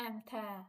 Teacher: əmtə sözünə ənin biri düşür digəri uzun tələffüz olunur əmtə bu formada tələffüz olunacaq sonra müxtəlif kəsrlərdə isə bəzi qaydalarımız var.